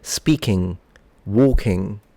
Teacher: the syllable final NG, which is merged into a single nasalized sound